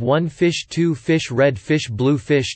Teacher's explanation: trochaic tetrameter, an arrangement of a strong syllable followed by a weak syllable, with four units per line. For example, the title of One Fish, Two Fish, Red Fish, Blue Fish.